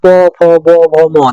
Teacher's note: উঠধনি যেমন প দেখেন উচ্চারণ করেন আপনারা উচ্চারণ করেন উচ্চারণ করলে বুঝতে পারবেন দুইটা ঠোট কিন্তু স্পর্শ করছে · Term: উষ্টধ্বনি